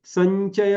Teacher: थोडा लांब आणि त्याच्यानंतर चय म्हणा संचय आता इथे संचय म्हणताना अनुस्वाराचा उच्चार कसा झाला म्हणजे च वर्गीय अनुनासिक जे आहे ज्ञ तर तो उच्चार आपोआप झाला संचय आता दोन्ही